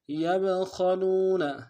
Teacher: با حرف قلقلہ میں سے ہے، جب ساکن ہوگا قلقلہ کریں گے